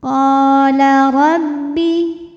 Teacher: Huruf ra dibunyikan secara tafkhim sebab ra berbaris fathah. Maka ra kita bunyikan dengan menebalkannya. Pangkal lidah diangkat.